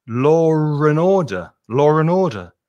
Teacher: when a native speaker says law and order it's law and order because there's an intrusive r sound that gets put in the middle · Law and order, when you say it normally, has an intrusive R sound.